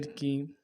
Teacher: مالی، مالی کاف زیر کی، کاف کو بھی نرمی سے پڑھیں گے اور زیر میں آواز کو نیچے دبائیں گے